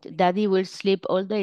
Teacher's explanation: pueden ver que tiene una voz trémula y también tiene problemas de tonalidad